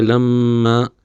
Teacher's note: میم اگر مشدد ہو تو اس میں غنہ کرنا ضروری ہے، اور غنہ کہتے ہیں ناک میں آواز لے جانا